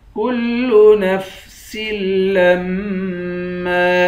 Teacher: لام کو میم سے ملا کر میم پر غنہ کریں گے، میم کے بعد الف ہے، الف حروف مدہ ہے، اس کو 1 الف کی مقدار کھینچ کر پڑھیں گے اور میم پر غنہ کریں گے۔